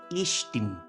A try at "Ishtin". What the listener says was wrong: you're putting too much E at the beginning. It's an I believe. Ishtin. Ishtin.